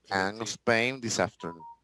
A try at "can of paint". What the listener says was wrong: Paint. Yeah, because if we say pain, pain is dolor.